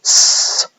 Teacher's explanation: so for example s is a a kind of fricative whereby we're making a small uh gap using our tongue on the alveolar ridge causing the air to be forced through that small gap · forced through this small gap and what happens then is that as air is forced through that gap we get a kind of hissing sound basically because what we're doing is causing a friction uh of · is known as a fricative and here what you do is instead of closing off the vocal tract completely you partially close it making a small gap so the air can still escape but it has to be forced through this small gap and